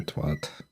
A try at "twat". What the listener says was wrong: No, twat. It's not twat. There's an A though, not an O. Yeah, we say twat. It's an A, not an O.